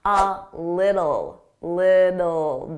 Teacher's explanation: Notice I didn't pronounce those T's. I pronounced them as soft D's.